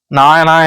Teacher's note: நாவின் நுனி மேல்வாய் பல்லின் அடிப்பகுதியை தொடுவதால நகரம் தோன்றுது